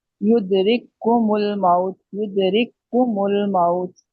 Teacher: दो काफ है, लेकिन एक काफ पढ़ा जा रहा है, और वो सख्ती से पढ़ा जाएगा क्योंकि वहाँ पे इदगाम हुआ है